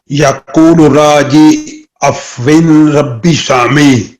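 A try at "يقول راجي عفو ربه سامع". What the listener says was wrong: अफ़वी एक ज़ेर है, अफ़वी रब्बिन सामिई। यक़ूलु राजी अफ़वी रब्बिन सामिई।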